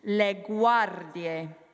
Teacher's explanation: if you can roll your R, that's a nice rolled R because it's next to a consonant